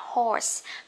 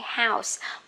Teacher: Con ngựa là o dài á.